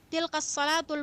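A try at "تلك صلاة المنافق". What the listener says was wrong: Tilka salatul munafiq. Jangan disambung.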